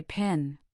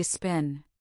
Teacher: When P appears at the beginning of a stressed syllable, it is accompanied by a strong burst of air. Hold your hand in front of your mouth and say pin. · Now say spin. Do you feel how the puff of air is much weaker or even absent? That is an unaspirated P. · Hold your hand in front of your mouth and say pin. You should feel a distinct puff of air on your palm. This is an aspirated P. Now say spin.